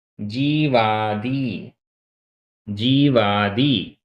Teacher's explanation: इसका संधि विच्छेद है जीव प्लस आदि, वा में छोटा आ, आदि का बड़ा आ, दोनों मिलकर बड़ा आ हो गया